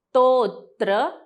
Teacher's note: तोवरती आघात म्हणजे दाब द्यायचा आहे